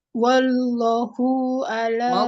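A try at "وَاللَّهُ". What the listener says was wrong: Wallahu, lamnya tebal. Lafzul jalalah tebal. Jangan. Bukan wallahu. Wallah. Allah tebal.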